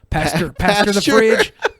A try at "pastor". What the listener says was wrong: You said pasture.